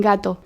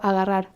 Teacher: al principio de una palabra es una G fuerte, por ejemplo, en gato. Sí. Es un G. Pero si está en la mitad de una palabra rodeado de vocales, en general es mucho más suave